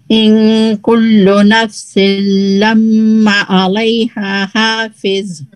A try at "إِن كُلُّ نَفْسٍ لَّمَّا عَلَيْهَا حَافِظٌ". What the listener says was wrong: लम्मा पे जो है वो हम ज्यादा टाइमिंग मीम पे ज्यादा टाइमिंग दे सकते हैं और लाम को नहीं टाइम देना ज्यादा।